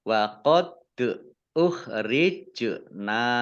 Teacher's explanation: dal sukun bacaan kolkolah atau memantul ditampakkan pantulannya. Kemudian jim sukun juga bacaan kolkolah ya, dibaca memantul.